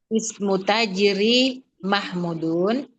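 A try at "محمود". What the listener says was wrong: Panjang Ibu, Mahmudun.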